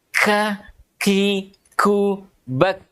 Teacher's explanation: pangkal lidah bertemu langit-langit belakang di depan makhraj huruf qaf. Iya, jadi pangkal lidah bertemu langit-langit atas atau langit-langit paling belakang ini, iya, di depan makhraj huruf qaf. · Ya, jadi kita baca kakang kaki kak naminal mukni mukakang kaki ka. Jadi ka, seakan-akan ada aliran nafas. Itu namanya hamas. Nafas kita mengalir. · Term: huruf kaf, sifat hams